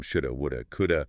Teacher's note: Think about modal verbs with have, should have, would have, could have. They almost always become shoulda, woulda, coulda.